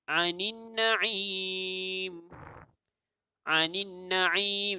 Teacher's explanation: ada satu nun yang kita tebal, kita gandakan bunyinya. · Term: wajibul ghunnah